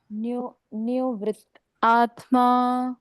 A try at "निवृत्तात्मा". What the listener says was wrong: आत्मा नहीं पढ़ना, अलग, निवृत्तात्मा।